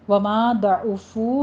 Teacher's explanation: وما ضعفوا میں ما میں الف مدہ ہے، ضاد کو پر پڑھنا ہے، عین کی آواز وسط حلق سے ادا کرتے ہوئے، ضمہ ہے، ہونٹوں کو گول کر لیجیے اور وسط حلق سے آپ نے عین ادا کرنا ہے۔